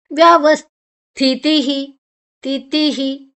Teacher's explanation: ತಿ ಆದ ನಂತರ ವಿಸರ್ಗದ ಉಚ್ಚಾರಣೆ ಹಿ ಇಲ್ಲಿ ತಹ ಅಲ್ಲ ಹ ಅಲ್ಲ ವಿಸರ್ಗದ ಉಚ್ಚಾರಣೆ ಅಕ್ಷರ ಚೇಂಜ್ ಬದಲಾಗುವಾಗ ಅದು